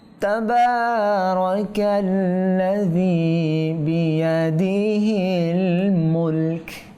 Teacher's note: থামলে কাফে সাকিন হয়ে যাবে